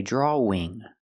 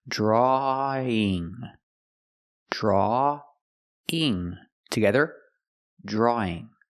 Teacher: we take the sound aw at the end of draw and link it to the ing sound